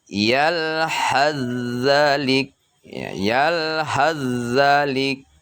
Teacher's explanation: huruf ha itu dia ditasdidkan ke huruf zal, sehingga huruf sa itu dia tidak kedengaran di saat kita membacanya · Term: idgham mutaqaribain